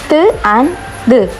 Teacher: ഇൻഡർഡെൻ്റൽ എന്ന് പറയുമ്പോൾ sounds produce with ദ tongue in between ദ upper ആൻഡ് lower teeth, such as ത് ആൻഡ് ദ്.